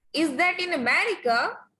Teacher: rising tone is used when you think you know the answer.